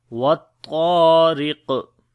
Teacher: Ra we read in light sound because there is kasra under the ra, and on the qaf if we stop, so then we make qalqala which is the strong qalqala, and also we read this qaf sound in heavy. So we say what tariq.